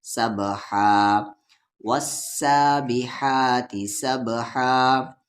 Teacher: سا کو با میں سب، با حروف قلقلہ ہے، جب اس پہ ساکن ہو تو یہاں پر ساکن ہے یعنی جزم ہے تو یہاں پر قلقلہ کریں گے، آواز کو ہلا کر پڑھیں گے